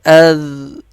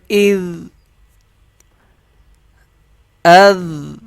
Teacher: نرم پڑھا جائے گا، زا کی آواز مکس نہیں کی جائے گی